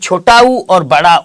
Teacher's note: छोटा उ और बड़ा उ की अगर मैं बात करूं तो इसका क्या होता है ओष्ठ होता है ये कहां से बोला जाता है ओठो से बोला जाता है